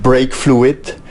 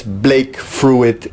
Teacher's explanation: the r and the l get interchanged here